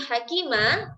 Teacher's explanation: ketika kita wakaf maka kita akan membuang satu harokatnya dan kita membacanya dengan dengan panjang 2 harokat jadi tidak lagi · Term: Mad iwad